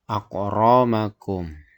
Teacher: Jadi bacaannya di situ tafhim. Jadi cara membacanya huruf ro itu dibaca tebal, tafhim, tebal.